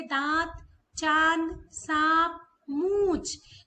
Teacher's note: ध्वनि जो है वो नाक और मुंह दोनों से होकर निकलती है